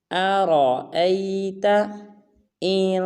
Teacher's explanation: بعض مسلمان پڑھ دیتے ہیں آرأیت، یا بعض پڑھ دیتے ہیں ارأیت، یہ بالکل غلط ہے۔ نہ حمزہ کو لمبا کرنا ہے نہ را کو لمبا کرنا ہے، بلکہ را کو پر ادا کرنا ہے